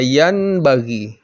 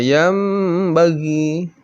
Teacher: Nun mati atau nun sukun, yang bagi tidak dibaca yan bagi, tetapi dibaca yam bagi.